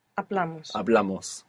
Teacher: with amos, we're adding on two syllables and the accent is going on the second last syllable. So, it's in a different position the accent to the other versions.